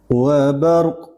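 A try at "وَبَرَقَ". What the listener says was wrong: Mana qalqalahnya?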